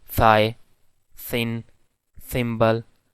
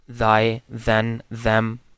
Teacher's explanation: this voiceless dental fricative has its counterpart, which is actually voiced dental fricative